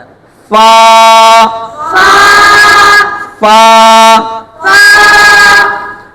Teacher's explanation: اوپر کے دانتوں کے اندرونی کنارے اور نچلے ہونٹ کا تر حصہ، یہ جو گیلا حصہ ہوتا ہے، یہاں سے فا آتا ہے.